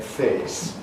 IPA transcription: feːs